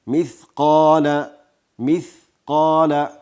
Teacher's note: ثا واضح تلفظ سی، قاف او الف دواړه ډک ویل کیږي